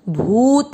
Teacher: भ पे बड़े ऊ की मात्रा लंबा खींचेंगे